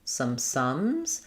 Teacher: The sound is just nice and flat. It's a central vowel versus an O. O would be rounded, so you don't want that.